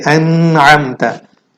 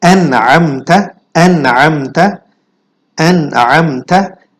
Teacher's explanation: After noon sakin we have ha. So we can't do gunna because ha is the izhar letter